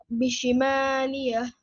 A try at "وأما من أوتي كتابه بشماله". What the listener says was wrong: did you read here? Do you said بشمالية? Where is the ya here?